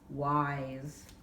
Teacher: And the S sounds like a Z, but it's an S, wise.